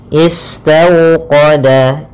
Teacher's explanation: Bacaan lin yaitu suaranya adalah lembut pada lafal waw sukunnya. Istawqada, istaw dengan dimonyongkan bibirnya.